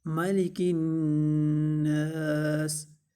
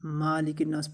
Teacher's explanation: میم زبر ہے، اس کو لمبا نہیں کریں گے، اکثر لوگ اس میں غلطی کرتے ہیں